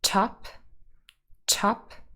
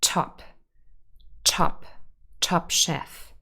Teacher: the t is in the initial position here, and very often in initial position, t will be aspirated. If you're not sure, you can always hold a piece of paper in front of your mouth, say the word top, top, and because there is the t with a little puff of air, the paper will most likely move. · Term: aspirated t